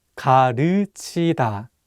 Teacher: this vowel 으 is much wider than the vowel 우